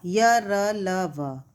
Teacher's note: अंतःस्थ व्यंजन उच्चारण करते समय जीभ किसी भी भाग से नहीं लगती। जब हम इनका उच्चारण करते हैं तो हमारे मुंह में जीभ किसी भी भाग से नहीं लगती है, इसलिए इनका उच्चारण स्वर तथा व्यंजन के बीच में होता है।